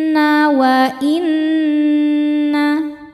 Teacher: Karena nunnya bertasydid. Cara bacanya dengung. Tahan dengungannya kurang lebih dua harakat. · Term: ghunah musyaddadah